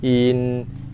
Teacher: Inna satu kalimah, kita jumpa hamzah baris bawah, kita bunyikan dia dengan kadar satu harakat terlebih dahulu, i. Kemudian kita tekan pada makhraj nun yang bersabdu dan kita dengungkan serentak, in. Kita tak mau baca dengan in.